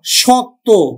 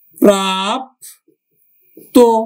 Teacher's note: তো আজকে আমরা এই অন্ত অয়ের আরেকটি নিয়ম শিখব, সেটি হচ্ছে শব্দান্তে, মানে শব্দের অন্তে, শব্দের অন্তে সংযুক্ত বর্ণের অ ও এর মতো উচ্চারণ হয়